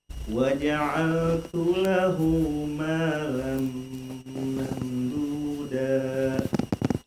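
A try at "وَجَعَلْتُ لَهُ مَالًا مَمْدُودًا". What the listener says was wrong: Agak kepanjangan ya. Mamduda da.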